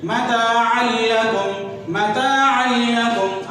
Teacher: دو زبر کی تنوین کے بعد لام آ رہا ہے، لہذا یہاں پہ ادغام تو ہوگا، گنہ نہیں ہوگا، آواز ناک میں نہیں جائے گی